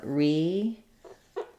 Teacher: we do have a little secondary stress probably on the re, because we do say a clear E vowel here for this re.